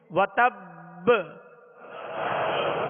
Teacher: وتب حرکت نہ پڑے بلکہ ساکن ہی ادا ہو, اور با کی آواز جو ہے لوٹ کر آئے, یعنی اس میں جنبش ہو. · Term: قلقلہ